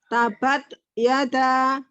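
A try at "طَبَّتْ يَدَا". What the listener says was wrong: Nah, huruf ta-nya lebih kayak kol-kolah daripada lepas. Tabat yada.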